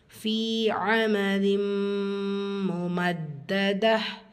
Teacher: முமத்த தால்ல ஷத்தா இருக்குது, அழுத்தம் கொடுக்கணும். வசனத்துடைய முடிவில் தா மர்பூத்தா இருக்குது, ஹா சாக்கினா மாற்றி ஓதணும்.